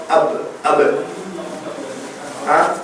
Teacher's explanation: இந்த பாவை பொறுத்தவரையில் இரண்டு உதடுகள் ஒன்றோடு ஒன்று இணைந்து கொள்ளும்